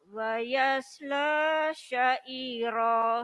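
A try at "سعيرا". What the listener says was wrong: Nah, coba jangan kalau bunyi sa tipis. Sa. Sa. Jadi tipis saja. Kalau titiknya 3 baru sya, baru tebal. Sa, sya.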